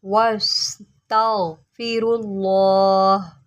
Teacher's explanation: غین کو موٹا کریں، سین کی سیٹی نکالیں